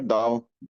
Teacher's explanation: दाओ with the fourth tone